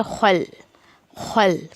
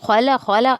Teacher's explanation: واو ہلکا پڑا جائے گا، میم کے ساتھ الف مت دیا کریں، خو کو ہیوی کرتے ہوئے لام میں مرج کریں، خل خل، ٹھیک ہے، لام پہ قلقلہ سے بچے، خلا خلا ایسا نہیں کرنا ہے۔